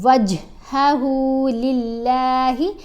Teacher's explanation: وج یعنی اگر واؤ کو جیم سے ملایا، آپ نے لپس بند کر لیے، دانت بند ہو گئے تو کلکلا ادا نہیں ہوگا، ٹھیک ہے، جیم کی آواز کو آپ نے ہلانا ہے